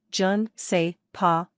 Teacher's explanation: the je and ne, I and don't, often glide together, so you may sound more authentic if you slur your syllables